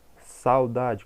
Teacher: Olha a palavra saudade, saudade, quase que eu não pronuncio o U. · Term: semivogal